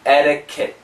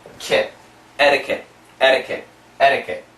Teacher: flap T, which sounds like a D, the American D